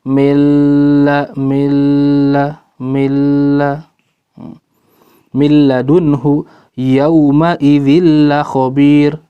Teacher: jadi tanwinnya masuk, sifatnya udah juga nggak ada, gunnahnya udah nggak kelihatan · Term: idgham kamil